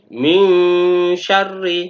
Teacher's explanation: Dalam hal ini ada nun sukunnya. Maka nun sukunnya ini dibaca secara samar-samar. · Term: ikhfa